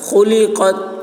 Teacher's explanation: تا میں قلقلہ نہ ہونے پائے